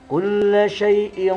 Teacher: cara bacanya yaitu samar dan dengung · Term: ikhfa